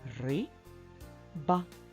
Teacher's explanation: в слові риба наголос на перший склад звук и